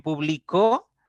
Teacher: medio en la sílaba del medio y en publicó ya la la mayor intensidad o el acento se va a la última sílaba